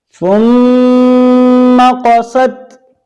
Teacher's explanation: میم پر شد ہو تو غنہ ہوگا۔